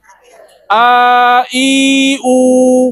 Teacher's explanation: A i u tidak ada sekatan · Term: huruf mad